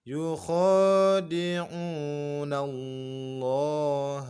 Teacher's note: lafaz Allah, lamnya kita baca mat 2 dengan ditebalkan karena sebelumnya berbaris fathah. Yukhadi'u, mat 2.